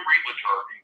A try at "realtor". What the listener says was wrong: It's pronounced realtor. It's not realtor. That's realtor. There's no vowel in between the L and T.